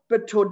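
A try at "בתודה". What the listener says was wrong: It's bitoda. I thought I heard a t. It's bitoda.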